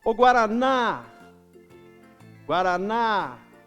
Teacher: a última sílaba é a tônica porque ela é mais forte · Olha que o ná é mais forte. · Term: sílaba tônica